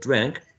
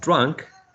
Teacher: when we produced a drank we have a trap and where we say drunk we have a wedge